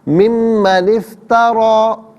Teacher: اچھا، پھر اس کے بعد نون کے نیچے زیر سے افترا کی ساکن کے ساتھ ملائیں گے، درمیان سے الف یعنی حمزہ کو حذف کیا جائے گا، اور افترا میں را پر کھڑا زبر ہے، را کو پر کر کے پڑھا جائے گا